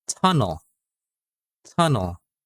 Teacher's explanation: Okay, hindi ko sinasabing tunnel. We're dropping the E sound.